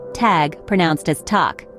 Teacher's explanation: the 'g' at the end of a word takes on a 'k' sound